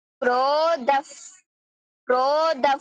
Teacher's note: আমি কিন্তু যখন বলতেছি তখন একটু ফ উচ্চারণ করতেছি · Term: বিসর্গ